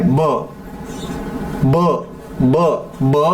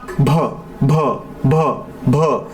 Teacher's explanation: ब ब ब ब हा अल्पप्राण आहे ना. त्याच्यामध्ये ह मिसळलेला नाही. पण त्याच्या समोर बसलेला भ भ भ भ ह मिसळीत आहे. ब अधिक ह भ बनला, भ भ म्हणून भ हा महाप्राण आहे.